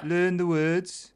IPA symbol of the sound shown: ɘː